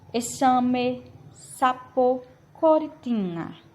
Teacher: Palavras que têm a maior força de voz em la penúltima sílaba. Palavras que têm a maior força de voz, um golpe maior de força na penúltima sílaba. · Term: palavras graves ou lianas